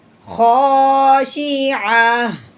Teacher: ٹھیک ہے، تو اگر لفظ کو جب پڑھتے ہیں تو تا پڑھتے ہیں، جب ہم وقف کرتے ہیں تو تا کو ہٹا دیتے ہیں، پیچھے ہا پڑھتے ہیں